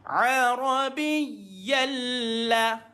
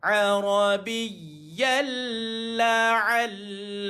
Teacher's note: Tapi dia tak dengung. Bila jumpa dengan 2 huruf saja tu, lam ataupun ra, maka tuan-tuan hanya tuan-tuan masukkan saja bunyi dia, tapi tak payah ada dengung. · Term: masuk tak dengung